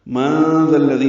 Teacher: نون ساکن کے بعد ذال آنے کی وجہ سے اخفا ہے ، ذال دونوں نرمی سے ادا کریں گے، ذال کو الذی